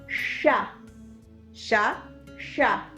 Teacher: Para hacer una analogía, en la palabra Krishna, el punto de articulación es justo palatal. La lengua está como apuntando arriba y ahí se produce la fricción del aire.